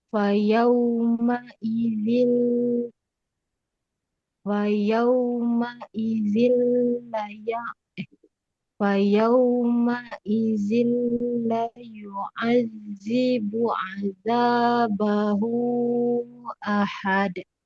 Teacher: Ahad pantulkan dalnya. Dza ujung lidah keluar sedikit dengan bunyi Z ya